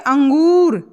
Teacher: यहां पर नाक का और मुंह का जो है दोनों का प्रयोग किया गया है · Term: अनुनासिक